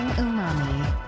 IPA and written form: uˈmɑːmi (Umami)